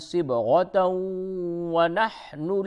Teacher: تا کو واو سے ملا دیں گے